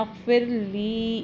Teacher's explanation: ली को एक अलिफ के बराबर लंबा करना है, छोटा नहीं करना